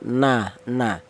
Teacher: huruf nun berasal dari ujung lidah menyentuh ee langit-langit mulut